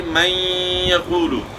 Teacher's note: نون ساکن کے بعد ادغام کے 6 حروف میں سے جو 4 حروف جن میں مع الغنہ ہوتا ہے، جن کا مجموعہ یمنو بنتا ہے، ان میں سے جو ہے یا آ گئی، من یقول، تو یہاں ادغام مع الغنہ ہوا، نون کی آواز کو ملا دیا یا میں، لیکن مکمل نون کی آواز ختم نہیں ہوئی، بلکہ غنہ جو ہے باقی رہ گیا ہے